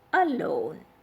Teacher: The prefix here is a and it is a weak prefix, so the stress is on the second syllable, that is L-O-N-E, alone.